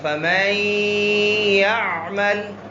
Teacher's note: نون کو یا میں داخل کریں گے اور ساتھ غنہ ہوگا. فمن یعمل، جس طرح غنہ ایک الف کی مقدار ہوتا ہے اس طرح ادغام بھی ایک الف کی مقدار ہوگی. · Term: ادغام مع الغنہ